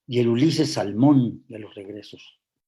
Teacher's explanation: Bueno, es un endecasílabo, tiene 11 sílabas. El acento prosódico está en la sílaba sexta, que es la central, en Salmón